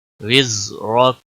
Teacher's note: زا پہ کلکلا نہیں ہونا چاہیے، اور را کو موٹا پڑھیں گے، وقف کی صورت میں کاف ساکن ہوگا۔